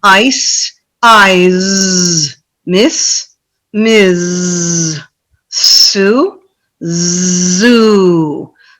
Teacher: So if you can have the students really focus on pronouncing the Z a little bit longer, then there should be a differentiation in the S and the Z sounds